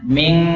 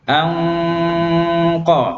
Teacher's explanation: Makhrajnya ketutup, maka suara lari ke hidung semua. Ming, makhrajnya rapat ya. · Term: ikhfa